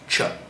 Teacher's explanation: The CH and the TR sound exactly the same, unless you're from the south, but I live in the north, so they sound the same, and it's just ch, which is the same as you saying cheese.